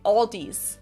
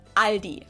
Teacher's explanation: I think I've also heard Aldi before, but I think most people say Aldi. Or they also sometimes add an S that isn't there in the end and say Aldis. In Germany, we just say Aldi.